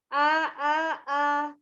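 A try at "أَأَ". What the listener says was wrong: Ada kencang salah satunya ya. Belum istiqomah 3 hurufnya. Kendorin semua.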